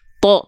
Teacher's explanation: huruf tho ketika fathah enggak dibaca ta tapi dibacanya tho terdengar seperti vokal o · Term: huruf yang tebal